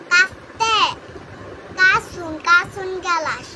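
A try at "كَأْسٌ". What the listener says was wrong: কাসুন, কাসুন হামজা সাকিন করবে না?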